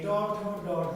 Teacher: তাহলে ট ঠ ড ঢ মূর্ধন্য কোথায় স্পর্শ করে? পশ্চাৎ দন্তমূলে। · ত থ দ ধতে সাধারণ অগ্রভাগ আর ট ঠ ড উল্টানো। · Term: মূর্ধন্য বর্ণ